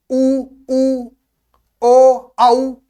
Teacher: जैसे ए, आ, ई, ए, जो होते हैं वृत्ताकार मुखी स्वर जो होते हैं उनके बोलने में होठ गोल होते हैं।